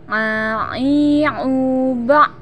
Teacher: Berikutnya a. Huruf a keluar dari tengah tenggorokan kita sama dengan cara kita melafalkan huruf h.